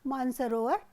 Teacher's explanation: मानस धन सरोवर, यहाँ पर स का लोप होगा और मानसरोवर हो जाएगा